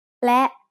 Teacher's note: และ is a high tone because it has an initial low-class consonant with a short vowel and a dead stop